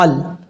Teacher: یہاں پر لام ساکن ہے، لام پہ قلقلہ نہیں کرنا۔ کئی لوگ قلقلہ کر جاتے ہیں، لام کو پڑھتے ہوئے آواز لوٹاتے ہیں، ایسا نہیں کرنا۔